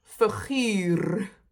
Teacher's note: Sometimes you barely hear the rolling r